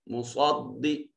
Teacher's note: स्वाद हर्फ इस्तिअला होने की वजह से मुफख्खम पढ़ा जा रहा है